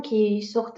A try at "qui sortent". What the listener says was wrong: Так, стоп. Ви кажете, кі сортен. Це як? Це кі сорт.